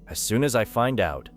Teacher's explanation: Notice how as I and find out connect.